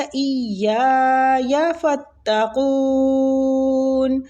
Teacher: رہی ہے، ٹھیک ہے۔ ایَّايَ فَاتَّقُونَ، قاف مستعلیہ حروف ہے، اور اس پہ ہم نے مد عارضی سکون بھی کرنا ہے، ٹھیک، تو اس لیے 3 سے 4 الف قون پہ کھینچیں گے ، ٹھیک ہے۔ وَآمِنُوا، اور ایمان لاؤ، بیما اس پر جو،